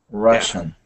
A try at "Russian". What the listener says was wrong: Russian. We say, Russian. Y recuerdes, es como, no es como CH, es más SH. Shh. No ch. Russian.